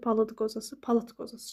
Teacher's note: Ona görə də palıd qozası palıt qozası kimi olacaq. Son samiti cingilt tələffüz olunmayacaq.